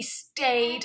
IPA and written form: steɪd (stayed)